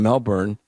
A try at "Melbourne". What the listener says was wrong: No. It's Melbourne. You're pronouncing the burn too much.